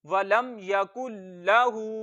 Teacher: हा उल्टी पेश हु, वलम यकुल्लाहु। लाम पे थोड़ा सा रुकना है, हा को एक अलिफ जितना लंबा करना है